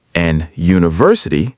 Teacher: >> A university because U sounds like you, a consonant sound, even though U is a vowel letter.